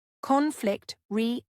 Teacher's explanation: Stress is on the first syllable of conflict and the second syllable of resolution.